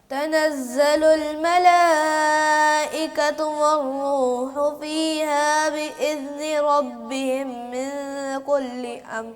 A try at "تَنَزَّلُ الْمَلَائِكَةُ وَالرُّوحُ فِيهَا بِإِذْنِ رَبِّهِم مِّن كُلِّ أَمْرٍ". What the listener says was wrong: یہاں پہ غنہ جلدی جلدی وہ سانس ختم ہونے کی وجہ سے نا